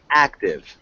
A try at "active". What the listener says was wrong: Good. Yeah, just the intonation there.